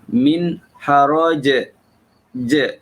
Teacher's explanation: Jadi bunyinya adalah bunyi qalqalah. Dia bukan berbunyi angin, hams. Dia tak bunyi hams. Jadi yang silapnya kita setengah-setengah pembaca membunyikan jim itu dengan memberi sifat angin kepada dia. · Ustaz perlu highlight di sini kerana kebanyakan ialah ada yang bacanya tidak memberikan hak huruf jim itu, iaitu sifat yang kita semua maklum. Salah satu sifat yang ada pada huruf jim ialah sifat qalqalah, detakan suara apabila ia mati ataupun apabila ia dimatikan kerana waqaf. Jadi bunyinya adalah bunyi qalqalah.